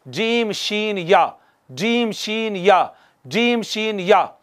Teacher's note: वस्ते ज़बान और ऊपर का तालु मिले तो, यहाँ से हरूफ शजरिया अदा होते हैं